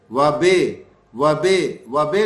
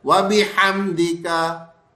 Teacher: یہ زیر کی آواز مجہول کر دیتے ہیں